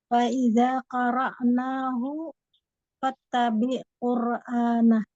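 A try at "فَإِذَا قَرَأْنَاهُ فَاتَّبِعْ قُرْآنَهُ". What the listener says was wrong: jangan ada jangan gitu kan nggak ada hamzah. Iya, kalau yang korok, nah itu baru korok nahu fatta. Nahu fat, nahu bibirnya monyong.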